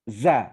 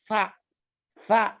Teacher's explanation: Kalau lidahnya keluar pasti bukan za keluarnya tsa